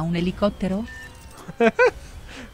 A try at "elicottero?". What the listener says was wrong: Col tono. Come se dovesse interrogare.